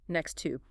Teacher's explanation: In natural, rapid speech, those T sounds assimilate. It almost becomes a single, held T next to. Shadowing trains the tongue to take those phonetic shortcuts automatically.